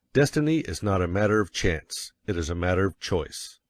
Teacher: Of course, you will want to emphasize destiny, for it is the principal idea in your declaration, and you will put some emphasis on not, else your hearers may think you are affirming that destiny is a matter of chance. By all means, you must emphasize chance, for it is one of the two big ideas in the statement.